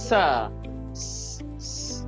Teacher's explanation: मैं पहले दांतों के साथ थोड़ी सी टंग ऑफ द टिप लगाता हूं। आई ब्रेक द एयर और फिर मैं उस एयर को छोड़ता हूं फ्रिक्शन के साथ एक जोर के साथ प्रेशर के साथ। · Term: कोसोनेंट